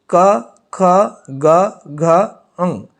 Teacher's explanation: क वर्ग जो है इसका उच्चारण स्थल क्या है कंठ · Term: कंठ वर्ग